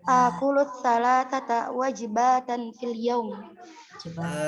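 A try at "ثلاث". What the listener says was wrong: Salasanya tetap. Salasa, nggak pakai ta.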